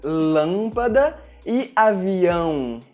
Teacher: Com o acento circunflexo e com o til, a letra A fica com um som nasal, como por exemplo nas palavras lâmpada e avião.